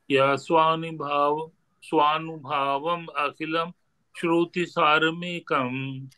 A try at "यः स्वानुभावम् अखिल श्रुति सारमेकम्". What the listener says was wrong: अखिलम् नहीं है अखिल यः स्वानुभावम् अखिल श्रुति सारमेकम्